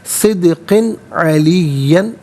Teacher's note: तनवीन को इज़हार के साथ पढ़ा जाएगा, इख्फ़ा या गुन्ना नहीं किया जाएगा